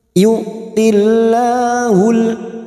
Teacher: lam jalalah yang sebelumnya kasroh kita baca tarqiq atau tipis.